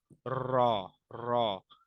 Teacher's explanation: जबान की नोक और मुकाबिल के तालू से अदा होता है जबान की नोक और ऊपर का जो तालू है बिल्कुल दातो